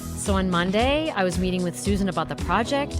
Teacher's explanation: this vocal style involves raising the pitch at the end of a sentence, making statements like questions, like I just did. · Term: inflection